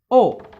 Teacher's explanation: O, the lip, there is lip rounding here, okay, o, so it is a rounded, it is the back part of the tongue that is used, and it is almost in an open position or just above open position, slightly above open position. We can describe it as a rounded open back vowel.